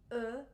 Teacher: you've got your lips puckered and you're really making an effort to make it dark and rich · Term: schwa